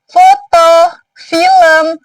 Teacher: Frikatif maksudnya itu bunyi yang menghasilkan desisan. Jadi udara yang keluar itu melalui celah sempit sehingga menghasilkan sedikit desisan. · ini dia termasuk ke dalam bunyi tak bersuara. Jadi pita suara ini tidak bergetar. · bunyi konsonan yang dihasilkan dari bibir bawah alat artikulator bertemu dengan titik artikulasi dental gigi atas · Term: bunyi frikatif, labio dental